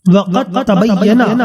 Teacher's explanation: میں دال اور تا دونوں متحد المخرج ہیں، لہذا ادغام متجانسین کیا جائے گا